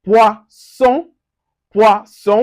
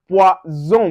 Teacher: we have poisson, poisson with the S. Now we have poison with the Z.